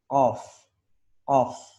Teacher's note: Jadi di pangkal lidah paling belakang. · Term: huruf qaf